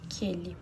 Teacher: aquele tá formando só um som, como se fosse o som de K. Aquele. Então, é um dígrafo, Q com U.